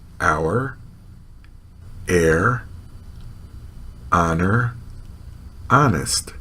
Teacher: in these words the H is never pronounced